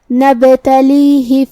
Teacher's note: ہا کے نیچے زیر ہے تو ہم ہا کو زیر سے پڑھیں گے. اپنی آواز لمبی نہیں کریں گے تاکہ یہ نہ ظاہر ہو.